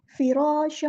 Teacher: تنوین کی آواز کو مکس اپ کرنا ہے، ادغام کرنا ہے